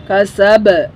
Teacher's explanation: বা কলকলার হরফ বাউন্স করতে হবে বা হরফে